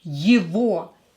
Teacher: this G here is pronouncing this word as V.